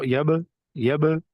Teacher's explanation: یب با حرف کلکلہ ہے، اور کلکلہ خوب ظاہر ہوگا کیونکہ حرف کلکلہ با یہاں پر ساکن ہے